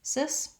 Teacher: it's a lax vowel and we're going to be short and light on it